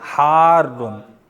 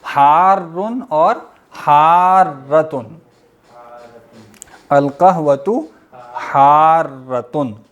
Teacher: را کو شد سختی سے پڑھیں گے اور تھوڑا سا لمبا کریں گے، چائے گرم ہے، کہوہ ٹھنڈا، القہوۃ، نہیں یہ مؤنث بنائیں گے نا خبر کو، القہوۃ حارۃن، را پہ تھوڑا سا رکیں گے، شد ہے نا، حارن اور حارۃن، القہوۃ حارۃن، را کی شد کے ساتھ۔